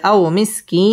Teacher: مسكينا ذا متربة أو مسكينا ذا متربة আও জবরের বাম পাশে জজম ওয়ালা ওয়াও লিনের হরফ তাড়াতাড়ি পড়তে হবে এবং ওয়াও ঠোঁট গোল করে উচ্চারণ করতে হবে